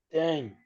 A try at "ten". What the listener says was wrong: no ten, sino ten, con aire.